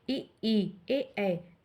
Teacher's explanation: जिन स्वरों के उच्चारण में जीभ का अग्रभाग काम करता है, उसे अग्रस्वर कहते हैं। जैसे ई ए, इसको बोलने में जीभ के अग्रभाग का काम आता है।